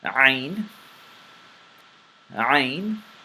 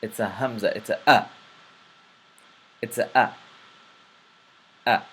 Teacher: This letter is pronounced from the throat. It is similar to the Hamza, but it is characterized by its thickness and throat involvement.